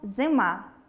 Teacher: Далі слово зима - [зиемá] - [и] ненаголошений, наближається до [е] й чується нечітко